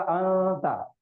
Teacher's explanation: हाँ, हुरूफ इख्फा के 15 हुरूफों में से ता आया, इस वजह से हम नून की आवाज को नाक में छुपा के पढ़ेंगे, तो हो जाएगा अंता, ठीक है।